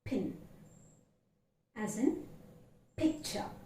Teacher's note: this is a bilabial plosive